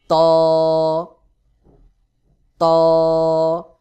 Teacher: ত উচ্চারণের ক্ষেত্রে আওয়াজটা গোলমত করে শক্ত করে হবে জিহ্বার আগায় একটু চাপ দিয়ে উচ্চারণ করতে হবে